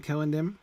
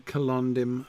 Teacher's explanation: the ND Continental cluster there before the last syllable which means the stress falls on the penultimate syllable